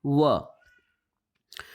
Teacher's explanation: दांत और जीभ और ओठों के कुछ योग से बोला जाने वाला वर्ण दंतोष्ठ कहलाता है